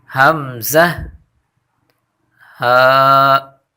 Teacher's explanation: یعنی یہ دونوں حرف حمزہ اور ہا ادا ہوتے ہیں گلے کے نچلے حصے سے، یعنی گلے کا جو سینے کی جانب حصہ ہے وہاں سے یہ دونوں حرف ادا ہوتے ہیں۔